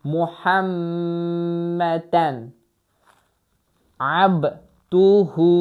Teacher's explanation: burda izhar qaydası var çünki demək tənvindən sonra boğaz hərfi gəlibdir ona görə orda sıxmırıq muhəmmədən yox demirik belə deyirik Muhəmmədən abduhu və rasul bu şəkildə oxundu.